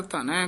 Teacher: ਇਹ ਧਨੈ ਪੋਲਾ ਹੀ ਬੋਲਣਾ ਧੰਨੈ ਨਹੀਂ ਕਹਿਣਾ